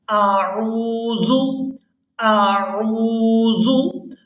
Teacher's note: حمزہ کو ہم نے اس کے مخرج یعنی اقصی حلق جو حلق کا سینے کی طرف والا حصہ ہے وہاں سے ادا کرنا ہے، اور عین کو ہم نے وسط حلق یعنی حلق کا وہ حصہ جو درمیان میں ہے وہاں سے ادا کرنا ہے